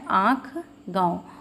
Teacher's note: मुख से भी और नासिका से दोनों का प्रयोग करके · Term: अनुनासिक